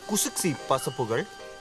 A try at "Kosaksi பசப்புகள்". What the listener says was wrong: குசுக்சி இல்ல, Kosaksi பசப்புகள்.